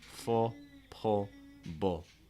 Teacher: these are all cases where the dark L is going to be much much much more common than the light l